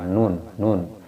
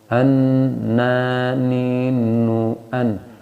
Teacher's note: Kalau nun tidak dikenakan dengan gigi, tapi dikenakan dengan langit-langit atas ya, bagian depan. Nun. Dekat dengan lam.